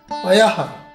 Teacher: हमें विसर्ग को आधे हा के साथ बोलना है